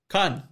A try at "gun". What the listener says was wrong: Yeah, but like, more of a G sound. Like gun, but like less. Pronounced G.